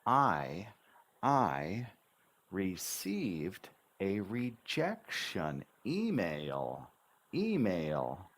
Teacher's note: your English Dynamic I I don't just say I received I I bounce the intonation on every syllable